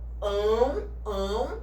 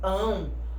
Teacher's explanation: quando a gente pronuncia esse pão o som a metade vai sair pelo nariz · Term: ditongo nasal